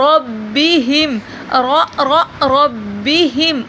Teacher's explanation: را کو پر موٹا کر کے پڑھا جائے گا.